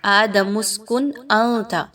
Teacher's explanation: نون کی آواز کو بہت کلیئر پڑھنا ہے کیونکہ حمزہ حروف حلقی میں سے آ گیا تو یہاں پہ اظہار کیا جائے گا، غنہ نہیں کرنا۔